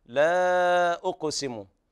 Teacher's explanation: وهنا المد المنفصل. قرأ حفص بالتوسط 4 أو 5 حركات، وقرأ ورش بالإشباع 6 حركات.